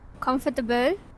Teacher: The participant inserted a schwa between t and b sound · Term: extra vowel added